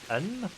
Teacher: When it comes of NG and NK, you pronounce the N, but touching the roof of your tongue to the soft part of the top of your mouth, near the throat.